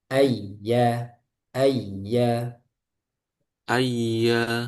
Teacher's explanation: Ayya bukan dilamakan, tapi ditekan.